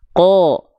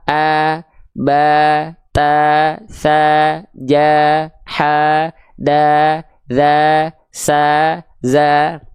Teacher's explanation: Kalau ada huruf tebal berharokat fathah, yang keluar bukan vokal A, tapi dia akan terdengar seperti vokal O. · berharokat fathah, ya, dia akan terdengar condong seperti vokal O, yaitu ko. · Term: huruf yang tebal